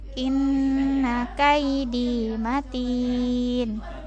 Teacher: In ditahan dulu, ada nun bertasydid.